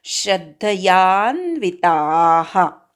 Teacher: श्रद्धया मधला श्र जो आहे त्याच्यावर आघात घ्यायचा, श्र बरोबर अर्धा द म्हणायचा. याचा उच्चार पूर्ण करायचा.